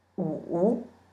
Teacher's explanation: Wu is a bouncing tone, a third tone.